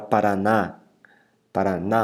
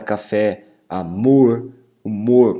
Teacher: repara que a última sílaba, inclusive, recebeu acento nesse caso. É chamada de sílaba forte, tônica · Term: oxítonas